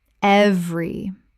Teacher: 2 syllables in natural speech. The middle vowel is dropped almost universally.